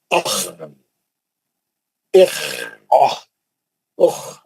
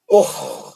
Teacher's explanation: آواز جاری رہنا، پکڑ لینا نہیں، اس کو بریک نہیں مارنا، اس کو چھوڑ دینا، بہتے رہنا، انہیں فلو ہوتے رہنا.